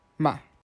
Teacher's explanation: And the fourth is a dropping tone, almost as if you were scolding someone